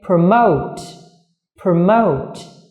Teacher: trọng âm của từ này rơi vào âm tiết thứ hai